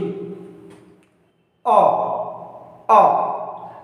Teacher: direct ध्वनि कंठ से टकरा रही है, कंठ से टकराने के बाद डायरेक्ट बाहर आ रही है